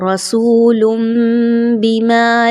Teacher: لام کے اوپر دو پیش کی تنوین کے بعد با کا حرف آ رہا ہے، اگین نون ساکن اور تنوین کے قواعد کو ذہن میں لائیے، اور چونکہ یہاں پہ میم مینشن ہے تو آپ نے اقلاب کا قاعدہ فالو کرنا ہے، تنوین کی آواز کی بجائے میم کی آواز نکالنی ہے